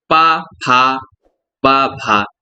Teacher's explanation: तो पा, फा, बा, भा, फा किस में आ रहा है, ओष्ठ से आ रहा है